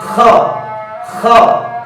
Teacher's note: কণ্ঠনালীর শেষ ভাগ থেকে খ হরফটি উচ্চারিত হয়। কণ্ঠনালীর শেষ ভাগ থেকে খ হরফটি, কণ্ঠনালীর শেষ ভাগ হলো এটা, এখান থেকে খ হরফটি পড়ার সময় নরম হবে, আওয়াজ নরম হবে, মোটা হবে, উপরের দিকে দাবিতে হবে, হামস বাতাস চালু, আওয়াজও চালু।